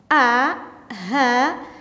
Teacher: kalau Hamzah itu dari mana tenggorokan posisi kita yang paling bawah